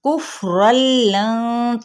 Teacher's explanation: فا پہ ہمس ہوگا